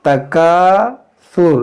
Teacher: देखिए, ता मुशद्दद है तो इसको पढ़ेंगे दो बार, तकासुर। देखिए, यहाँ अलिफ के साथ, यहाँ पर देखें काफ के साथ अलिफ है और यहाँ अलिफ से पहले ज़बर है।